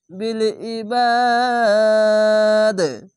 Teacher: এখানে একটি কলকলা আছে, তার জন্য ধাক্কা মেরে নিচে সাউন্ড আসবে, প্রথমে 3 আলিফ টেনে তারপরে কলকলা হবে, এরকম ভাবে বিল ইবাদ, এভাবে প্রথমে টানবেন, তারপরে কলকলা করে থেমে যাবেন।